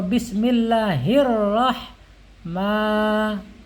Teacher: Mimnya panjang, di situ ada fathah yang berdiri nih ya, dibaca panjang 2 harokat